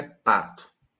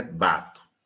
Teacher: Aí você vai dizer, não, porque são bilabiais. Então, onde residiria a diferença entre P e B? Aí você olha e diz, um é desvozeado e o outro é vozeado. Essa diferença no vozeamento, ela é tão distintiva, ela é tão marcante, que ela é capaz de gerar palavras diferentes.